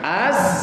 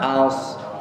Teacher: Jadi benar-benar satu makhraj dengan sin. Sifatnya sama, ada sofirnya.